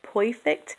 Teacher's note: the beginning R sound can have an oi sound